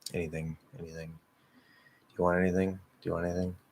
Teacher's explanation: I notice I voice the TH. It's a very slight TH, and it only happens when I'm speaking lazily and a bit faster.